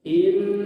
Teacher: Paling sedikit ditahan dua ketukan. In atau sempurnanya tiga. Ya. Jadi jangan kurang daripada dua. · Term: gunah asli